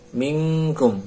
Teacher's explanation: Na'a manu nyambung. Mingkum nun kaf ikhwa, nunnya samar, masuk ke huruf kafnya, dekat situ.